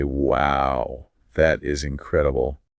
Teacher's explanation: It goes up on exciting emotional words. So, the word incredible gets the highest pitch. The middle syllables actually rise in tone.